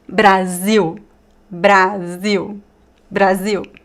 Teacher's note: And the l is not o. It's u. · The I in Brazil is really open.